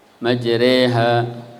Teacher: Bunyi imalah itu adalah bunyi antara fathah dengan kasroh. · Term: imalah kubro